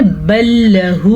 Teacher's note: بل لہ، لام زبر لا، اس سے زیادہ لمبا نہیں کر سکتے